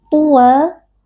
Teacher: ta huruf tebal kita angkat pangkal lidah. Kemudian wa man'i waqf karena kita waqaf pada fathatain.